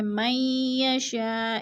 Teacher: من یشاء، ادغام مئی پہ، اور یشاء پہ پھر مد متصل ہے، چار الفی مد ہے، چار الف کے برابر ہم نے اس کو کھینچ کر پڑھنا ہے